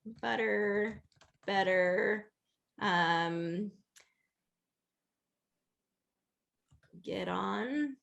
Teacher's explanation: you don't want it to be butter with that voiceless sound. It's just going to be voiced. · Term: tap T